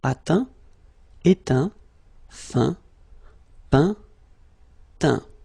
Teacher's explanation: as usual, final T not pronounced